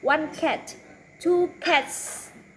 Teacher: again the s ending is unvoiced